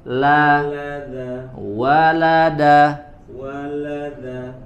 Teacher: wa'ada, walada, La-nya tipis, lamnya wala, la bukan le, la, walada, walada, walada, da, da, bukan za, da.